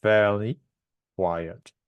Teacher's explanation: you've got 4 syllables in total, but the stress is on the first syllable in each word.